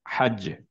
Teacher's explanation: কলকলা দিলাম বাতাস বের হলো না এবং ফাস্ট স্টপ করলাম কারণ কলকলা দেওয়ার সময় যে ফাস্টের যে স্টপটা সেটা অনেক ফাস্ট · ফাস্ট স্টপ করতে হবে কিন্তু তারপরে কলকলা দিতে হবে মুখ থেকে বাতাসটা বের হবে না